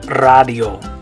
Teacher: We'd say radio, but remember in Spanish the A is going to make an ah sound. So in Spanish you say radio.